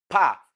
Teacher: is a voiceless bilabial plosive